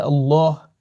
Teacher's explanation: بعض لوگ اللہ پڑھتے ہیں تو لام کو موٹا کر کے پڑھتے ہیں